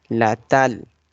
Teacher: This t is representing the ta sound. It will be light.